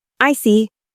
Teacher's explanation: When you show understanding by saying I see, your tone drops a bit to show calmness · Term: falling tone